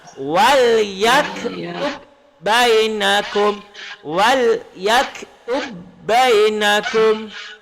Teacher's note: Walaupun ba mati qalqalah tapi dia kena masuk ke ba.